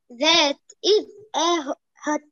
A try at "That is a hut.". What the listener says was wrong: Hut, okay, not hot. That is a hut.